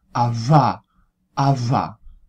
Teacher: se nota ese murmullo que se añade al ruido de fricción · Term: variante sonora